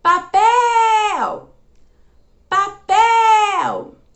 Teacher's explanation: A sílaba que eu fiquei chamando por mais tempo foi o pel. Então, a minha sílaba tônica nessa palavra seria o pel.